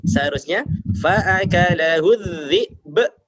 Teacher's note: ketika ada ba dibaca waqaf, maka sebagaimana sifatnya tadi adalah qalqalah harus dipantulkan